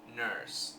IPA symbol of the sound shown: ɜ